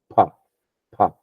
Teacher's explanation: When I say pa, the sound comes purely from my lips. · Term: labials